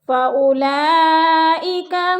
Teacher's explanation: فَأُولَئِكَ، فَأُولا پہ مد متصل ہے، 4 الفی مد ہے، 4 الف کے برابر اس کو کھینچ کر پڑھنا ہے، کیونکہ حروف مدہ کے بعد حمزہ اسی کلمے میں ہے تو مد متصل۔